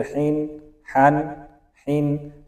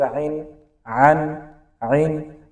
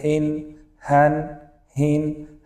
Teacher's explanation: تنوین و یا نون ساکن بعد حروف حلقی بیاد اظهار یعنی واضح خوانده می شود، غنه نمی شود